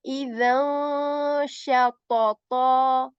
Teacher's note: we are going to hide the voice of n in idhan. Idhan ends in n sound. So we are going to hide that n sound. Idhan shatata, then sha.